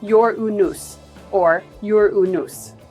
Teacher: The traditional English pronunciation places emphasis on the first syllable, sounding like Ur-unus or Ur-unus.